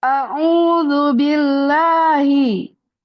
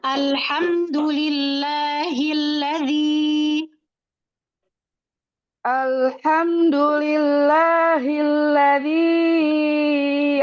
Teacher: Memang H ini dia punya sifat suka ngilang dia. Makanya karena dia suka ngilang kita harus adain dengan kasih power.